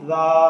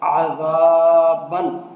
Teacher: اب اس ذال میں سیٹی کا خیال رکھنا ہے کہ یہاں سیٹی کی آواز نہیں ہونی چاہیے۔